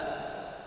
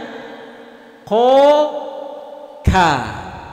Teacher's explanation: Huruf kaf ini makhrajnya atau tempat keluar hurufnya yaitu ada di pangkal lidah dengan lurus langit-langit yang di atasnya, agak keluar sedikit dari makhraj huruf qaf